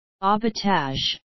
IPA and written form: ɑ:bə'tɑ:ʒ (abattage)